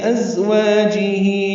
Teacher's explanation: ازواجہ میں زا تیز صفیر کی آواز سے ادا ہوگا، والف مدہ ہے، ہی مد صلہ ہے، دو حلقات لمبا ہے.